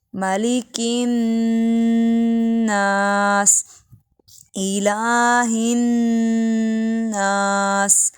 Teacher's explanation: ناس میں نون مشدد پہ غنہ کیجیے